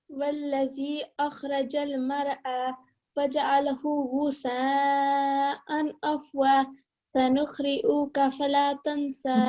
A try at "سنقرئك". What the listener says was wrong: Okay, it's not sanukhrikas. It's not a kha. This is a qaf. Sanuqri'uka.